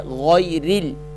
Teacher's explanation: را کے نیچے کسرہ آئے گی یعنی کہ زیر آئے گی تو را کو باریک پڑھنا ہے، موٹا کر کے نہیں پڑھنا.